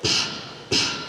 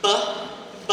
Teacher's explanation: B, b, I can feel that hum in my throat, that vibration. So they're the exact same place of articulation, manner of articulation, but one is voiced and one is unvoiced.